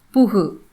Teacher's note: கடைசியில இருக்கக்கூடிய கு அப்படிங்கிறது குறைந்து ஒளிக்கவில்லை முழுமையாக ஒளிக்கிறது புகு இல்லையா புகு அப்படின்னு முழுமையா ஒளிக்குது. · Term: முற்றியல் உகரம்